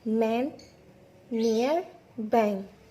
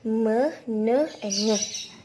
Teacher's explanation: tidak semuanya udara itu keluar melalui mulut, tapi juga ada udara yang keluar melalui hidung. Coba hidung kita sumbat dan lafalkan konsonan hidung tersebut, tidak akan bisa karena nasal tersebut, konsonan hidung tersebut udaranya tidak semua keluar dari mulut tapi juga melalui hidung, seperti me, ne, and nge. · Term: konsonan nasal